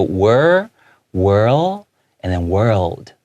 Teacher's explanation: make sure that L, the tongue comes out, comes back in before you end it with a D